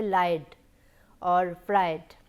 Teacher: it is preceded by a voiced sound, that is why the ed d sound is remaining voiced, it is not voiceless